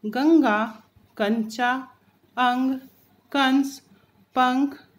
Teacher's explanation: अनुस्वार का उच्चारण करते समय नाक से ध्वनि निकलती है